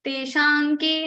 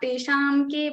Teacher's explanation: Ka belongs to this ka varga. Now ka varga's nasal consonant is nga. Anga will come in the place of anuswara. So we will say teshanke, not teshamke, but teshanke, because ka is coming after anuswara.